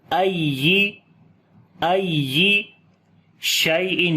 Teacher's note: یا کی آواز کو باقی حروف کی نسبت اونچا کر کے پڑھیں گے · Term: نبر